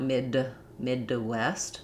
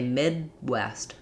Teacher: We would just say Midwest. That D is unreleased. There shouldn't really be a shadow there. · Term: unreleased D